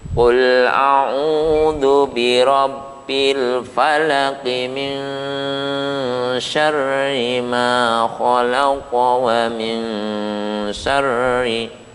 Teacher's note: Kalau dibaca wasol seperti itu maka hak qalqalah itu menjadi hilang. Sekali lagi dikatakan qalqalah kubro karena dia terkena sukun arid dan letaknya ada di akhir kata.